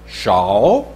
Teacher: this is a third tone, falling, rising